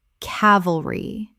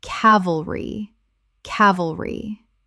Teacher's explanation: Three syllables with the stress on the first.